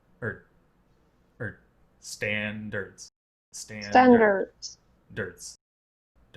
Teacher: it's this very subtle, very relaxed... it's like an uh in butter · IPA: ə